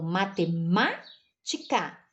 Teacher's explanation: Ela tem 5 sílabas, mas a antepenúltima dela é a tônica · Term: proparoxítona